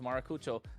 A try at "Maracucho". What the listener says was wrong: you're forgetting to roll the R, man.